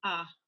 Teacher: in the Filipino [diction], the a is more of an /a/, a harder sound.